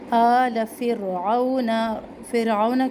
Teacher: آل فرعون کی را کو موٹا پڑھنا ہے